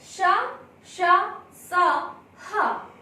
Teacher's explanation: ऊष्म व्यंजन, इनके उच्चारण में मुंह से गर्म श्वास निकलती है।